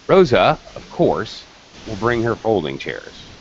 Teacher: there are pauses in my rhythm to indicate where the commas are